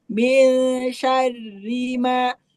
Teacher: ri-nya jangan panjang, tapi ditekan.